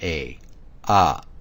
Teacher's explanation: there's an implied vowel remember it's the short a sound the creaky tone